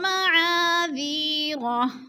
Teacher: الف مدہ کو ہم نے ایک الف دو حرکات کے برابر کھینچ کر پڑھنا ہے